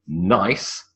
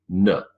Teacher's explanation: the tip of the tongue sits on the alveolar Ridge and you make a nut sound